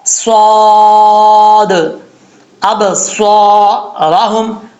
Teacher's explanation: اگر نہیں ہوگی تو کبھی بھی سیٹی کی آواز نہیں آئے گی۔ صاد جو ہے حروف صفیریہ میں سے، اس میں سیٹی کا آنا لازمی ہے